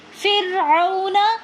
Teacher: را ساکن ہے اور اس سے پہلے زیر ہے تو اس را کو ہم باریک کر کے پڑھیں گے۔ فرعون، را کے اوپر اگر زبر یا پیش ہوتا تو را کو ہم موٹا پڑھتے، لیکن یہاں پر را ساکن ہے اور اس سے پہلے زیر ہے تو اس لیے اس را کو ہم باریک کر کے پڑھیں گے۔